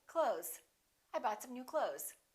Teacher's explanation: same thing with the word clothes we don't really say clothes you might hear a tiny th with some people's pronunciation but most people just say clothes